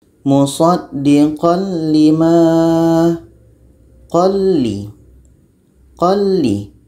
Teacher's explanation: Jadi tanwin ini masuk kepada bunyi la. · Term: idgham bila gunnah